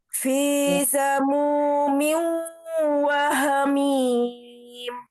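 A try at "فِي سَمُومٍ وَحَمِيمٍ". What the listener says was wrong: Hati-hati di fi, tidak terlalu panjang ya. V-nya tidak dipanjangkan. 2 harakat saja. Fi sama dengan mu-nya itu. Fi samumin wa hamim.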